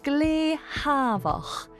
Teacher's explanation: S lenites to a H sound. Savach, quiet, becomes glehavach, very quiet.